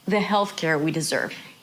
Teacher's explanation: So we deserve is pronounced fully. It is not reduced, but it's lower in pitch.